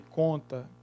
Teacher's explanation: O ont de conta, o ON, ela pronuncia-se com um O, tendo sobre si um tio, né, como nós temos aí. Já que as letras ON representam um único som nasal, que é exatamente o O com o tio. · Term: processo de nasalização